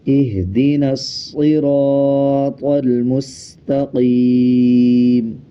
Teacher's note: صاد کو نون کے ساتھ ملا کے پڑھا جائے گا اور صاد کو موٹا پڑھا جائے گا